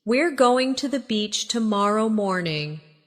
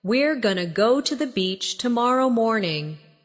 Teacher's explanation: Going to often becomes gonna in casual speech.